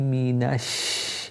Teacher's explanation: Your lips are going back. You're spreading the sound of the sheen in the mouth. The sound of the sheen still continues, as does air.